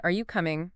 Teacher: your voice rises at the end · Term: rising intonation